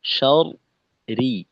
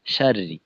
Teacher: এমন না যে শুরুর অংশ মোটা হুম শেষের অংশ পাতলা, এমন না, উভয় রয়ই পাতলা।